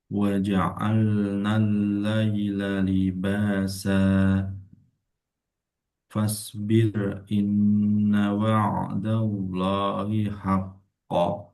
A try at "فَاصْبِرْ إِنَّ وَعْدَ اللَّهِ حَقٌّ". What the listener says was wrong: Hati-hati dan ko jangan berharkat haq wa'dallahi haqq.